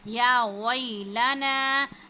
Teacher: या वैलना, या पर जो है वो खड़ी ज़बर है और नून पर जो है वो मद है 5 अलिफ के बराबर, इसको खींचते हैं